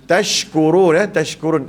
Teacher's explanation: pastikan SY sini ya. Jangan macam kita baca S saja. Ma tashkurun tak boleh.